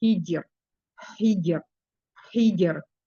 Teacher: di permukaan lidah bagian tengah menempel kuat dengan langit-langit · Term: huruf jim